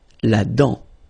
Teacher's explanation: Final T not pronounced